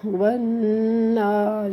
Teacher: یہ نون مشدد ہے، اس میں آپ نے ہمیشہ غنہ کرنا ہے